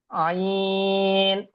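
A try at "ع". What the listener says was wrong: আরো টান দেন, আরেকটু টান দেন, আইন, বলেন।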